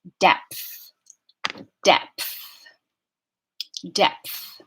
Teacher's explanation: depth has it a plain old monophthong vowel and it's the a sound as in dress the dress vowel depth depth depth it's kind of tricky to coordinate the P